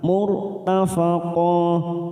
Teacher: Wasa'at murtafaqah, murtafaqah, mur ra sukun kita baca tafkim karena sebelumnya ada dhammah